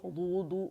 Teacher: اس میں نا واو شامل نہیں ہوگا، لپس شامل نہیں ہوں گے